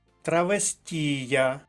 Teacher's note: наголос на третій склад передостанній третій склад